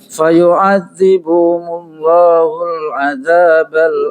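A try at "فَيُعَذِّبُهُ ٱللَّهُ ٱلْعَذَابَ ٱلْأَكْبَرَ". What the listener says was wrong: Enggak ada mimnya aja. Fayu'adzibuhullah langsung.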